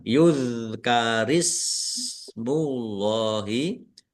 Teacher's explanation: Bacaan izhar syafawi dibaca jelas. Dal sukun bukan qalqalah jangan dipantulkan. · Allahnya dibaca tebal karena harakat di depannya dommah. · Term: bukan kolkolah